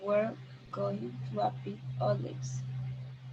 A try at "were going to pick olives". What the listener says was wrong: A little A escaped there, but you said it correctly.